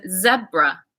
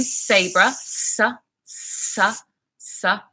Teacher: so one is voiced and the other one is unvoiced